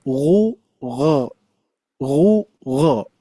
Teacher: huruf ghain pun juga mempunyai sifat yang lain yang dominan yaitu tebal isti'la. Makanya ketika pengucapan dommah apalagi ya dommah dan juga fathah itu tebalnya kita kerasa ya ghu gho ghu gh tapi ketika kasrah bukan tipis.